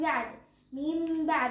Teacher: نون ساكنة أتى بعدها حرف الباء هنقلبها لميم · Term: الإقلاب